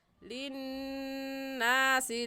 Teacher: للناس میں نون مشدد ہے اور نون مشدد پر غنہ ہوتا ہے، غنہ کر کے پڑھیں گے ایسے للناس لعلهم يتفکرون.